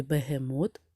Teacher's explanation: в слові бегемот наголошений третій склад мод